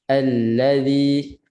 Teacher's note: Makhraj hamzah baris atas nipis. Ketat bunyi a. Jangan baca allazi, jangan bunyi malas tu.